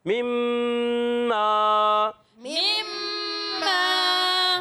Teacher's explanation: میم پر تشدید ہے، اس کو بھی ایک الف کا غنہ کرنا ہے، ایک الف ہم نے لمبا کریں گے.